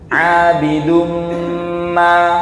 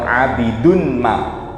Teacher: Di sini ada tanwin ketemu mim, idgham bi gunnah, ditahan agak panjang Bapak Ibu.